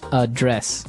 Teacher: the verb address has the stress on the second syllable